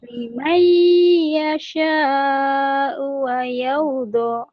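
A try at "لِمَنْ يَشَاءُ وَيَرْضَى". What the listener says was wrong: Mayardo. Tapi U-nya jangan panjang ya. Limai yasha'u wa yarda. Limai yasha'u wa yarda. Liman yasha'u wa yarda gitu. Liman yasha'u wa yarda.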